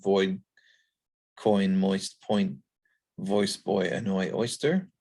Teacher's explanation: And it again has two subsequent articulations. So it starts off with aw. Notice this is not ah, it's a little bit higher and round, and then a glide between I and y. So it's got those two very different articulations.